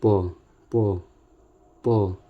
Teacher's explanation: प बोलते हैं तो दोनों होठ आपस में मिल जाते हैं। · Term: स्पर्श व्यंजन